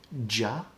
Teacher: ja is actually um a combination of d followed by zh